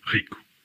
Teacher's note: When at the beginning of a word or doubled, in European Portuguese it's r, similar to a French or German R, while in Brazilian Portuguese it's ha, ha, or ha.